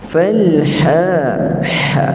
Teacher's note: Ha tempat Ain Tengah halq dipanggil wasatil halq